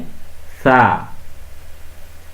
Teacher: জিহ্বার আগা সামনের দুই দাঁতের মধ্যে লাগবে, আগার মধ্যে।